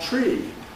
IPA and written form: triː (tree)